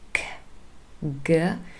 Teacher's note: K and G are formed right at the back of our vocal tract, and we call these velar sounds. · Now that is because G and K, if you say them and just pay a little bit attention where your tongue is and what movement you have, K, G, so the back of the tongue is involved in forming the sound, not the tip,